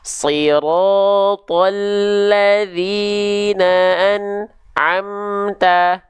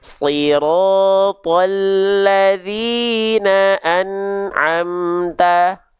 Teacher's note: bunyi an di sini tidak boleh ada jarak antara an dengan ain. Ya, nggak boleh putus suaranya. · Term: tawasud